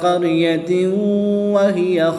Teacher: 2 زیر کی تنوین کے بعد واو حرف معلوم میں سے ہے تو یہاں پر ادغام مع الغنہ ہوگا، یعنی غنہ کر کے ادغام کریں گے